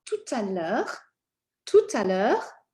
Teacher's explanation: you're going to connect this T because of the vowel sound following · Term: liaison